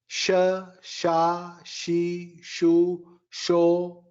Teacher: she is talavya sha plus e